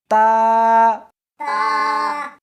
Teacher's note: اس حرف کو زبان کے اوپر کے تالو سے ملا کر پڑھیں گے